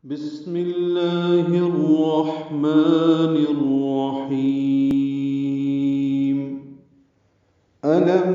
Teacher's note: حمزہ کو اقصی حلق سے ادا کریں گے، اس کی جہر کی صفت ہے، واضح حمزہ ادا ہو، لام کو باریک پڑھیں گے اور میم ساکن پہ اظہار شفوی ہوگا۔